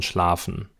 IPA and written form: ʃlaːfn̩ (schlafen)